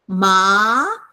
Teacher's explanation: it goes up at a 45 degree angle